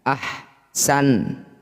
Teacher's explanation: Nun huruf terakhir ketika sudah disukun didengungkan tapi satu ketukan saja. · tidak usah dipanjangkan karena awalnya memang pendek maka ketika dihentikan tetap pendek